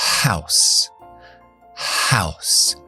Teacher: la H la h en inglés es lo que llamamos glow sale el sonido de aquí de la garganta y es fricativa se escucha el aire pero es sorda